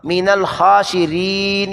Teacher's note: من الخاسرین، خا پر کھڑی زبر علی مدہ کے قائم مقام لمبا کیا گیا ہے، من الخاسی، ری کو لمبا کیا کہ را کے بعد یا ساکن آ گئی ہے